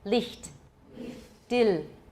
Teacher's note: German does not have a dark L at all. So if you hear one, it's probably an American or a Russian speaking German.